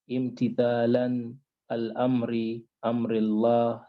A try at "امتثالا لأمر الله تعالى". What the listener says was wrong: لا. امتثالا there's كسرة on the lam. But here there's a lam. حرف جر لام.